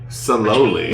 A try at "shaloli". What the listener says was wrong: she's saying it wrong because she's Shaloli is what we say. saloli, we say shaloli. When there's an S, there's an implied H. So shaloli,